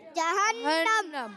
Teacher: جہنم جی ہاں، ہا کی ادائیگی حلق کے نیچے والے حصے سے، اور نون مشدد ایک الف کا غنہ کریں گے